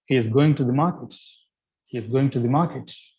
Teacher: the falling tone suggest that you are very sure that the particular person is going to Market